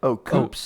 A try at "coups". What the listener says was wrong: it's not coops. P silent there.